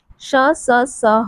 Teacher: जब हम इनका उच्चारण करते हैं तो हमारे मुख से एक प्रकार की गर्मी, एक प्रकार की ऊष्मा या फिर एक प्रकार का घर्षण जो है निकलता है। इसलिए इन्हें उष्ण व्यंजन कहते हैं।